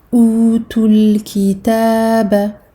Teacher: je vais faire la liaison avec le lem ici sakin, je vais faire disparaître le waw sakin. Donc on a une rencontre de deux soukoun.